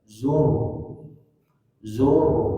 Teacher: yang pertama ketika sukun asli dia dibaca tebal